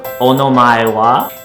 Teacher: do note that the sentence is pronounced with a rising intonation as to say that you are asking a question